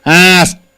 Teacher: Asked, this is T sound because K is unvoiced.